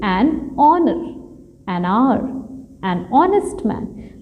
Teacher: these words started with or begins with H, but it is not sounding H